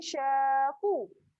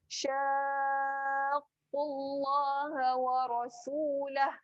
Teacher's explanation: Ada qaf pula kena tekan dekat pangkal